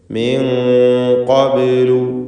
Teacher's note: മിൻ ഖബ്ലു, സാക്കിനത്തായ നൂനിനെ ഇഖ്ഫാ ഹഖീഖി നൽകി മറച്ചു മണിക്കണം. മണിക്കലിൽ തഫ്ഖീം വേണം, ശേഷം ഖാഫാണ് വന്നത് എന്നതുകൊണ്ട്. മിൻ ഖബ്ലു, ഖബ്ലു എന്ന് പറയുമ്പോൾ ബാഇൻ്റെ സുക്കൂൻ ഖൽഖല സുഗ്റ നൽകി ശബ്ദം ഹറക്കത്ത് പോലെ ചലിപ്പിക്കുക.